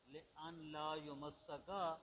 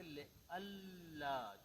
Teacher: اس نون کو لام میں تبدیل کر کے لام کو لام میں ادغام کر دیں گے، پڑھیں گے لِأَلَّا، چونکہ قریب المخرج، لِأَلَّا یمسک، پھر یوں پڑھیں گے.